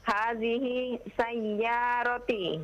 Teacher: Jangan disambung dengan sin. Anda dengar hadhihis. Oh ya. Dipisah, jangan disambung.